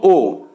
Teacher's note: এটাকে বলা হয় উচ্চমধ্য বা অর্ধ সংবৃত স্বরধ্বনি উচ্চমধ্য কেন কারণ ঠিক উঁচুতে নেই উঁচুর পরে স্থান তার উঁচুর